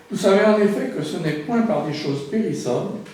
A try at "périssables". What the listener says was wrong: Périssable, c'est ça que tu as dit? Parce qu'on entend périssant.